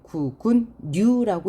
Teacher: 의견란이라고 썼는데요 우리가 읽을 때는 리을이 니은으로 바뀌었어요